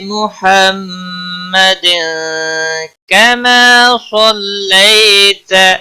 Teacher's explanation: محمد وقف کی صورت میں دال ساکن پڑھا جائے گا، قلقلہ بھی ہوگا، اور ملانے کی صورت میں اخفاء حقیقی ہوگا۔ تنوین کے بعد حروف اخفاء کا کاف آیا ہے، اخفاء حقیقی ہوگا